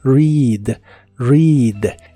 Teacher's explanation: La E de esta palabra se pronuncia como una I larga o doble y la A no se pronuncia